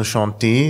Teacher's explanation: Also chanté, da ist von dem T nichts mehr zu spüren.